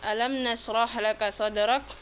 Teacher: Alam nasrah itu izhar syafawi karena mim sukun bertemu dengan nun. Cara membacanya mim dibaca jelas tanpa dengung. Shadrak itu qalqalah sugro karena huruf dal sukun berada di tengah kata.